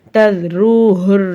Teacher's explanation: தத்ரூஹுர்ல ராக்கு மேல பேசுறதுக்கு ராவை வலினமா ஊதணும்